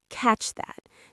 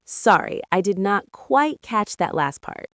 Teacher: Try to link the words catch and that.